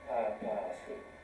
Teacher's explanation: the stress was not on the first syllable, purpose, but papasu